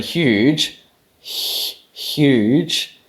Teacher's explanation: word huge huge you actually make a palatable fricative huge that there is actually a palatal fricative